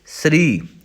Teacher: ਸੱਸੇ ਦੇ ਵਿੱਚੋਂ ਐੜਾ ਵਿਅੰਜਨ ਜਿਹੜਾ ਹੈ, ਸਵਰ ਜਿਹੜਾ ਹੈ ਉਹ ਗਾਇਬ ਹੋਇਆ ਹੈ। ਇਸ ਕਰਕੇ ਇਹਨੂੰ ਆਪਾਂ ਥੋੜ੍ਹਾ ਜਲਦੀ ਬੋਲਦੇ ਹਾਂ। ਸ੍ਰੀ ਰਾਰਾ ਪੂਰਾ ਹੈ, ਰਾਰਾ ਅੱਧਾ ਨਹੀਂ ਹੈ, ਇਸ ਲਈ ਸ੍ਰੀ।